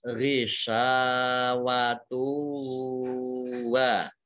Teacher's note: Kemudian tak marbutoh dhammah tanwin bertemu dengan huruf wawu, ini bacaan idgham bi gunnah. Idgham itu masuk, gunnah itu mendengung, mendengung wawu.